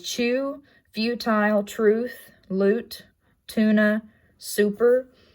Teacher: the description is high back rounded and tense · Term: lowercase u